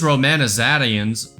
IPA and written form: roʊˌmænəˈzæɾiənz (romanizations)